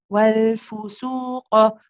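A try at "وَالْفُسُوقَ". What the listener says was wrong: It's a little bit long. Wal fusuqa. Be careful not to say for, though. Your dhamma on the fa is starting to slip a little bit. Wal fusuqa.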